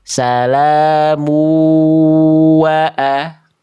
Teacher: Ah yang A itu dia enggak pakai dengung. Dia enggak sengau.